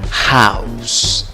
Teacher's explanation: Entonces te sale como el sonido de una A con una W. Au, au. ¿Cómo pronuncias la palabra?